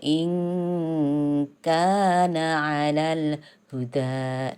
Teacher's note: Maka nun sukunnya harus dibaca samar-samar. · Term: ikhfa